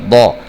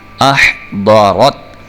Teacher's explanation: الف زبر اح، ضاد زبر ضا، اح ضا، ضا کو آپ دا نہیں پڑھ رہے، ضا منہ اوپر کی طرف کھول کے پڑھ رہے ہیں